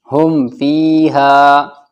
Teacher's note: میم ساکن کے بعد نہ تو با آیا ہے اور نہ میم آیا ہے، تو یہاں پر کیا ہوگا اظہار شفوی